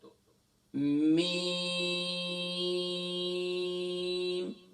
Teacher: میم کا مخرج دونوں ہونٹوں کے ڈرائی پارٹ سے ادا ہوتا ہے. یعنی کہ دونوں ہونٹوں کے اگر خشک حصے کو ملائیں گے تو یہاں سے میم ادا ہوتا ہے.